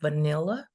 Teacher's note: which has three syllables, and the stress goes in the second one